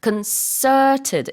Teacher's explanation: 강세도 두 번째 음절에 들어가서 concerted 이렇게 발음을 하셔야 돼요. T 발음은 물론 뭐 북미권에서 안 해도 됩니다.